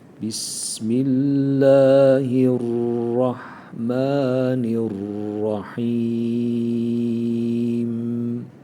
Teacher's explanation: sin harfine dikkat edelim biraz Keskin akıcı bir ses olması lazım Bismillahirrahmanirrahim yine buraya dikkat ettik Fatiha'nın ilk ayetinde özellikle arkadaşlarımız şöyle